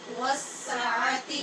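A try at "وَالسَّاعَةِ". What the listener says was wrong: والساعاتی نہیں پڑھیں گے، والساعتی نہیں پڑھیں گے، تینوں حرکتوں کی مقدار برابر ہوگی، بس دو کی اوپر ہوگی، ایک کی نیچے ہوگی۔ والساعتی،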